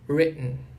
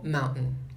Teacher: Então, esses dois T's viram uma pausa glotal.